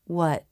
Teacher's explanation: I don't release the T at the end. The tongue goes to the roof of the mouth, but then I just stop the air. My teeth aren't together, and I don't release. · For the stop T, the teeth don't come together because they don't need to release. The air simply stops with the tongue in position.